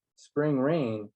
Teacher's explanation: in line one spring rain is equally accented